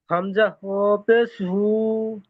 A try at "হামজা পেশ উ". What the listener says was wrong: হু নয়, হু তো এটা হবে, এটা উ হবে। হামজা পেশ উ। হামজা ও পেশ উ।